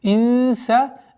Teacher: Здесь мягкая ихфа. Ихфа мягкая в размере 2 огласовок назализации